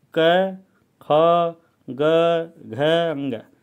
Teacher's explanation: ये कंठ कहलाते हैं, क्योंकि इनका उच्चारण कंठ से होता है